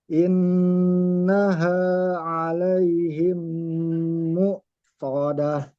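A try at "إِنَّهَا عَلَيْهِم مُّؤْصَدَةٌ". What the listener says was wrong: Mu sodah kurang desisan. Mu sodah. So, so, mu sodah. Nanti hamzah, setiap hamzah sukun macet syiddah ya. Syiddah suaranya hilang, apa suaranya tertahan. Mu, nah habis, nggak ada suara lagi. Mu, nah, itu ada suara lagi berarti. Mu, jadi mu,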